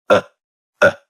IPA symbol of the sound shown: ə